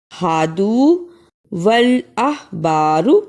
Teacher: یہاں ہادو کو تھوڑا سا لمبا کرنا ہے اور احبارو کو جلدی پڑھنا ہے